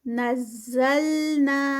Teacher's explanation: زا کی clear buzzing sound, نزلنا، نا پہ 2 کاؤنٹس۔